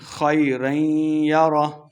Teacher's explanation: وقف کرنا ہے، آخر پہ ہا کی آواز آئے گی